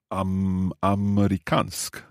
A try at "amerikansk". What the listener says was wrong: Perfect, bra.